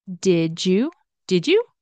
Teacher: the D followed by a y sound d y sound turns into a j sound